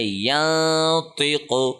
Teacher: ہم نے زبان کہیں پہ ٹچ نہیں کی، نون کو ناک میں پڑھا ہے، چھپا کے پڑھا ہے اور 1 سیکنڈ لمبا کر کے پڑھا ہے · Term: اخفا